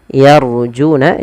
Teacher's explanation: Di sini pelafal yarjuna ada ra yang berharakat sukun yang didahului dengan fathah, maka di sini kita baca dengan ra tebal yarjuna, jangan yarjuna.